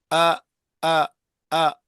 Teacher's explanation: حمزہ اقصى حلق سے نکلتا ہے